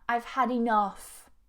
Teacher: Make sure you get that stress on the second syllable as well.